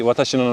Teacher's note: so if i say watashi like every syllable has a similar stress